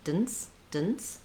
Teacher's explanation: The DENCE again has a syllabic N, sounds like I go right from the D to the N, dence. I wrote it here with letter I just to help you kind of visualize and think about the sounds, jurisprudence, but I'm not really making much vowel there.